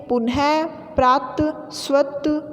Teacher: विसर्ग का उच्चारण ह की तरह होता है।